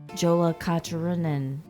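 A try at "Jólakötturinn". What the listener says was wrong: Yeah, the J is actually pronounced.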